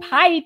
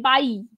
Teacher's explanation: তো এখানে আমরা দেখছি যে মহাপ্রাণ ব্যঞ্জন অল্পপ্রাণ ব্যঞ্জনে পরিণত হয়েছে